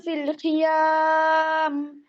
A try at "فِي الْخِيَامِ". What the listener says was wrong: ফিল খি, খরা একটু দেখেন, ফিল খিয়াম, ফিল খি, খিয়াম খিয়াম না হয়, আরো পিছন থেকে, হ্যাঁ। ফিল খিয়াম, ফিল খি, গলার শেষ থেকে। ফিল খিয়াম, জিহ্বার গোড়া থেকে একটু নিচে।